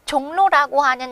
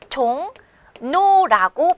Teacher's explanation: 불편하기 때문이죠 그래서 실제 이것을 발음하면 종 노라고 발음을 하게 돼요 을로 써 있는 글자를 우리가 니은으로 다르게 발음한다는 거죠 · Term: 자음 동화